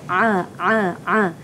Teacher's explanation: Jadinya kita kena sebut sebab dia ain ialah makhrajnya ialah di halqum, kita sebut a. Bukan di hidung ya